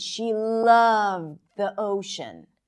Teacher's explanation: Now, the word loved obviously sticks out here.